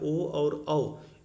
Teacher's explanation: यानी ओकार औकार, इन दोनों का उच्चारण स्थान कंठ और ओष्ठ है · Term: कंठ ओष्ठ